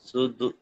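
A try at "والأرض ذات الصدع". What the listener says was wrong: সদ, হ্যাঁ সদ, একটু আইনে আসবে সদ,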